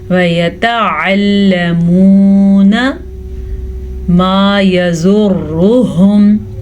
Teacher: ما يَضُرُّهُمْ زوات کو پر پڑھنا ہے اور را کو بھی پر پڑھنا ہے کیونکہ را پہ پیش ہے